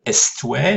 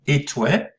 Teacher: Le S n'est pas prononcé, donc on ne dit pas est-toi, non, on dit et-toi.